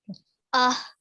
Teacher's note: this ha sound comes from the middle of your throat